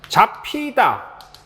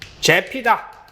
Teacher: 후설모음이었던 아를 갖다가 전설모음인 에로 바꿔버리는 형태인데요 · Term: 전설모음화